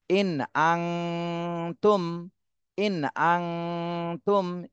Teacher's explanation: এই মিম সাকিনে গুন্না করা যাবে না কেননা এরপরে বা আর মিম এই দুইটা হরফের কোনটাই আসেনি এজন্য এই মিম সাকিন স্পষ্ট করতে হবে